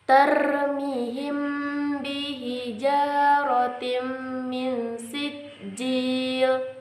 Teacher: Ikhfa syafawi adalah hukum bacaan yang berlaku ketika mim mati bertemu dengan huruf ba. Dibaca dengan menyamarkan mim mati karena dengungan.